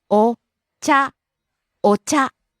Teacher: rising on the second syllable Cha.